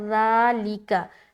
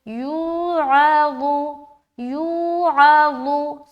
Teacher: और ज़ाल में क्या है कि सीटी की आवाज़ नहीं आएगी लेकिन अदायगी बारीक होगी, तो दोनों में फ़र्क समझे। ठीक है, ज़ाल में नरमी के साथ हम अदा करते हैं और बगैर सीटी के, और ज़ा में मोटा अदा करेंगे बगैर सीटी के